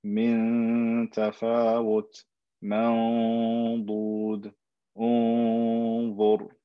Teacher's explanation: I'm not touching my tongue to the top of my palate. I'm hiding the true makhraj of the noon and doing a slight bit of ghunna along with it.